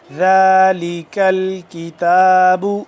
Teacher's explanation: ذالک الکتاب، دونوں کاف باریک ہیں، یہ کاف یہ بھی کاف، یہ والا، یہ دونوں کاف باریکی سے پڑھیں گے، موٹا نہیں کریں گے